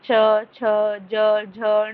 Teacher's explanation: जब च वर्ग को बोलते हैं तब हमारी जो जीभ है तालव्य पे लगती है